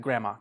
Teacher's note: you don't really say the D, you just say like grandma.